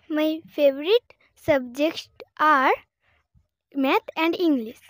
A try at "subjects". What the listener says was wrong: ওকে, তোমার কিন্তু একটা উচ্চারণে ভুল হচ্ছে, যেমন তুমি সাবজেক্টস এই যে এসটা টানটা বলতে পারছো না, একটু ঠিক করে বলতে হবে।